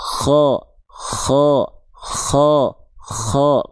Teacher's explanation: Huruf kho ketika dia berharakat fathah akan terdengar seperti vokal o. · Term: tebal